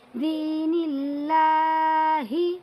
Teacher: یہاں پر بھی اللہ کے لام کو باریک پڑھیں گے کیونکہ اللہ کے لام سے پہلے نون کے نیچے زیر آیا ہوا ہے